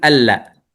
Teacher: لأن لا النون ساكنة وبعدها لام مفتوحة متحركة، فيكون هذا هنا ماذا؟ إدغام